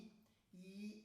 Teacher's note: a língua sobe e ocupa quase toda a cavidade vocal, ficando apenas um pequeno espaço para o ar passar entre a língua e o céu da boca, e a cavidade vocal é muito pequena.